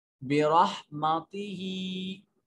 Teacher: हा के नीचे या अलमदिया सगीरा है, एक अलिफ के बराबर, इसको लंबा करेंगे